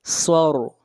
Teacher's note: را کو موٹا پڑھیں گے، را سے پہلے زبر ہے، اور صاد کو موٹا پڑھیں گے، صاد حروف مستعلیہ میں سے ہے۔